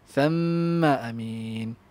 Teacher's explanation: Mim musyaddadah, mim musyaddadah, mim musyaddadah. Gunnah, wajib gunnah. So bagi masa kat situ.